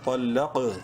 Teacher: منہ بھر کے پڑھیں گے طا کو، لام قاف زبر لق، لام قاف کو بھی منہ بھر کے پڑھیں گے لیکن قلقلہ ہوگا چونکہ قاف حروف قلقلہ میں سے ہے اور ساکن بھی ہے